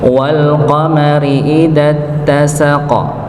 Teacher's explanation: Qnya dipantulkan dikenakan sukun di akhir ayat.